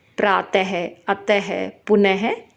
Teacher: विसर्ग इसका उच्चारण ह की तरह होता है